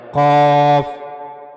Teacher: काफ पुर पढ़े जाने वाले हुरूफ में से है। लिहाजा इसको हमेशा पुर पढ़ा जाएगा। मोटा करके पढ़ा जाएगा। काफ और उसके बाद काफ के बारे में हमने पढ़ा कि इसे सख्त जो तालू है यानी मुंह का ऊपर वाला जो सख्त हिस्सा है वहां से काफ अदा किया जाएगा।